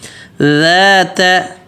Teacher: ذال بالکل نرم پتلا, دونوں دانتوں کے بیچ میں زبان رکھنی ہے. آگے کے جو دونوں دانت ہیں اوپر نیچے کے, ان کے درمیان میں زبان رکھنی ہے.